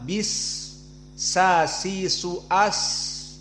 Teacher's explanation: Maka di saat disukunkan sin, ada desis yang keluar dari suara. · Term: rokhawah